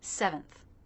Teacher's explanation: stress is on the first syllable. So the second will be shorter, flatter, and lower in pitch.